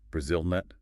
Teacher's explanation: If you put the stress on the third syllable, it just sounds wrong. Also, for Brazil nut, make sure the stress is on the second syllable for Brazil and that the L is clearly said